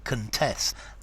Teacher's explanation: Okay, so a contest, whereas to with a schwa sound, contest as a verb